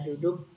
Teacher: bunyi yang dihasilkan oleh keterlibatan ujung lidah atau Apex dan gusi atau alvelum bagian atas caranya ujung lidah sebagai artikulator menentu kakii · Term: bunyi apiko alveolar